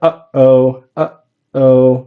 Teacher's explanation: So what I'm doing at the end of that first syllable, uh-oh, my throat's kind of suddenly stopping the sound. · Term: glottal stop